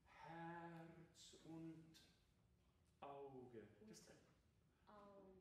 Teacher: I was exaggerating the glottal.